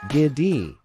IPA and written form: ˈɡɪdi (giddy)